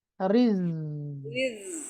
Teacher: আপনি র رز বলার সাথে সাথে জিহ্বাটা নিচের দাঁতের গোড়ায় নিয়ে যান।